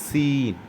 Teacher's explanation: ஏபிசியில் உள்ள அந்த சி உச்சரிப்பு வர வேண்டும். சற்று விசில் சவுண்டோடு வந்தால் நல்லது